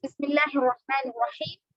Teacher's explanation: لفظ اللہ سے پہلے زیر ہے تو باریک پڑھیں گے، لفظ اللہ پہ یعنی کھڑا زبر ہے تو مدہ کریں گے.